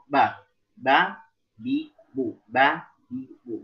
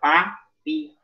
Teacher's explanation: bibir bawah dengan bibir atas ketemu, bagian bawah, bagian belakang ya, bagian punggung bibir kita. Ba, bi, bu, bukan pa, pi, pu.